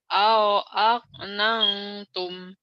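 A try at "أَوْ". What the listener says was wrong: au jangan au gelap au ya. au aknatum.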